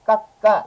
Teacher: 예, 너무나 자연스럽게 깎까 이렇게 발음하게 되는 거죠. 그래서 요거 쌍받침 쌍기역을 그대로 다음 음절 첫 소리로 옮겨서 발음하면 됩니다. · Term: 연음